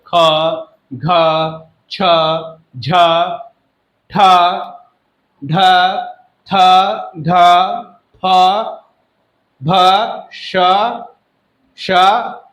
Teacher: ऐसे व्यंजन जिनके उच्चारण में अधिक समय लगता हो तथा श्वास वायु अधिक वेग से बाहर निकलती है, उसे महाप्राण व्यंजन कहते हैं।